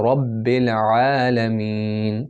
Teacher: یہاں پر جو عین ہے وہ یہ والا عین ہے، عین کو مڈل تھروٹ سے پڑھنا ہے